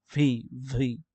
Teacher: উপর দুই দাঁত আর নিচের ঠোঁট হালকা কামড় দিবেন